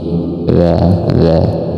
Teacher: Wza ini di ujung lidah. Ujung lidah kita itu bersentuhan dengan dua gigi. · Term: dalal